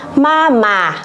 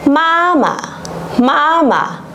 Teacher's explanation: khi mà đọc thanh nhẹ thì để đọc hay đọc đúng thì các bạn có thể hình dung nó bằng khoảng 1/2 dấu huyền